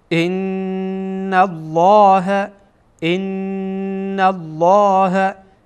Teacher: وقت نون و میم مشدد باشد غنه صورت میگیره، یعنی اینکه صدا از بینی خارج میشه، صدا از بینی خارج میشه.